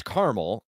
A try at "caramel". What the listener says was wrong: No, there's an A. C-A-R-A. That's not a silent A.